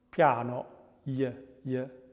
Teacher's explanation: glide, which is voiced, is pre-palatal